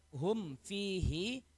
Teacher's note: Karena asli hukum hum fihi itu adalah izhar syafawi. Izhar syafawi harus dibaca jelas mim sukunnya. Mim sukunnya harus dibaca jelas sehingga tidak terjadi bacaan ikhfa syafawi.